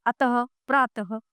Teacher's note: विसर्ग का उच्चारण आधे है के समान होता है। इसका प्रयोग व्यंजनों के पीछे होता है, जैसे अतः, प्रातः आदि।